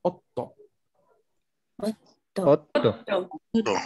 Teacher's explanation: Primero pronunciamos ot, mini pausa y luego to. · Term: doble consonante